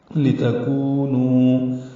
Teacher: کونو دونوں واو مدہ ہیں، دو حرکات لمبا کریں گے